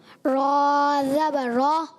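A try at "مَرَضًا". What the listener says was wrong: زبر یہاں نہیں لگاتے پیارے بچے. زبر ہو جاتا ہے یہ. زبر نہیں کرنا. زبر دان ملائیں. زبر. جی مارا. مارا دون.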